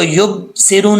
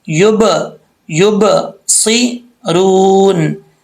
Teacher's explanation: ان 5 حروف میں سے کوئی بھی حرف ساکن ہو اس میں قلقلہ کیا جائے گا. تو یہ با حروف قلقلہ میں سے ہے، یہاں قلقلہ کریں گے. یب، اس کو یب سیرون نہیں پڑھیں گے، غلط ہو جائے گا.